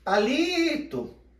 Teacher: Repare que o li é a parte que eu mais permaneci pronunciando. Então, ali é a minha sílaba tônica.